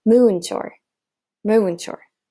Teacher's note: we see that the long vowel here, the moo, almost has its own syllable.